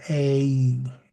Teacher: Today we'll talk about the long A. It's more than just one pure sound. It is almost an A plus a Y sound. You form your mouth to say the A, and then you bring your chin to halfway to close your mouth.